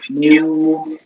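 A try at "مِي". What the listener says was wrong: মিউ না মি, মস্কের মি জের ভাই আছে কি থাকার কারণে টান হবে।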